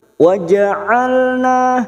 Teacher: sifat tawasud dan jahr jangan samakan dengan Hamzah wasul halqi bagian tengah tenggorokan ya rongga tenggorokan lebih menyempit